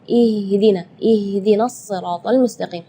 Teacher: Sedangkan makhraj huruf H itu adalah dari tenggorokan. Jadi keluarnya tipis karena H itu termasuk huruf di antara 28 huruf hijaiyah yang paling lemah adalah huruf H.